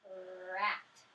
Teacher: Your tongue tip was up and your lips were spread.